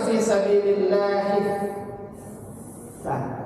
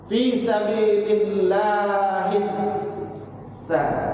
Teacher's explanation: Sa-nya dikasih syiddah, dikasih tasydid. Tasydid itu bermakna tekanan, ya, tekanan, tahanan. Jadi dia harus ditekan dan sedikit ditahan. Udah berat ditekan, tambah berat.